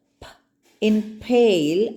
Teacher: there is a abrupt noise where the air is held up and released all of a sudden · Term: plosives